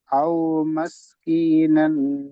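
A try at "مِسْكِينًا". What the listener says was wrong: মাস না মিস।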